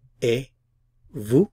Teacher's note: I'm not pronouncing the T.